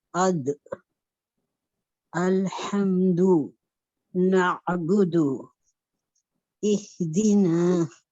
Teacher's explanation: تا اور دال میں باریک آواز ہوگی